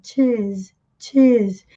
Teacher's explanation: No inglês britânico, eles não pronunciam o R, eles prolongam mais a vogal